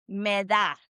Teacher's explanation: You can just practice and say and the d sound is really like a th sound that we have in English, right? So, it's really soft. It's not a hard d like we have in English.